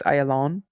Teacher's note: the accent on Hebrew on the final syllable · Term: accent on the final syllable